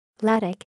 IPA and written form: ˈladic (Lâdik)